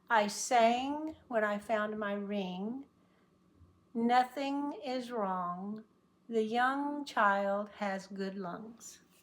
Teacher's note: the middle of the tongue stops all the air from getting out so that it only comes to the nose